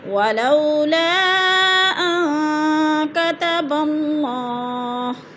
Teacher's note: نون ساکن کے بعد کاف حروف اخفا میں سے ہے تو ادھر غنہ کریں گے، ناک میں آواز کو چھپا کر پڑھیں گے